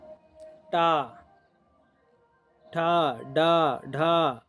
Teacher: टा वर्ग जो है टा वर्ग मूर्धा से है